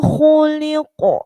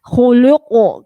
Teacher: Jadi tebal, tipis, tebal. Artinya lamnya huruf tipis diapit oleh huruf tebal, jangan sampai lamnya ikut dibaca tebal. Ya, karena kadang-kadang kita khuluqo ya, karena kha-nya sudah tebal, qafnya juga tebal.